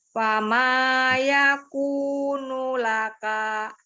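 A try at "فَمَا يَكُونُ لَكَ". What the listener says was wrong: Laka, jangan laka. Jangan diayun kalau dia pendek. Fama yakunu laka.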